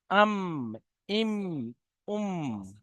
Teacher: দুই ঠোঁটের শুকনো অংশ মিলিত হয়ে উচ্চারণ হয় মিম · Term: মিমের মাখরাজ